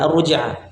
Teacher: alif lamnya masuk di huruf ro secara sempurna ya seakan-akan tidak ada tidak ada lamnya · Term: kamil